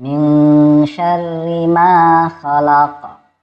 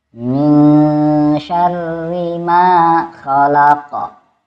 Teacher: Perhatikan huruf ma dibaca 2 harkat. Qaf dibaca memantul.